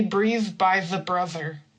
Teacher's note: So this is a voiced th voiced because we're using vibration and the vocal cords.